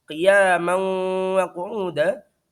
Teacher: Qiyaman wa qu'uda, ada mim yang bertanwin, fathah tanwin bertemu dengan wawu disebut dengan idgham bi gunnah karena ada tanwin bertemu dengan wawu.